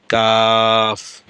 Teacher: জিহ্বার গোড়া থেকে একটু আগে বাড়াইয়া তার বরাবর উপরের তালুর সঙ্গে লাগাইয়া কাফ, মধ্যখান পেঁচানো কাফ উচ্চারিত হয়।